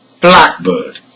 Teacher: Black is stressed and it functions as a noun.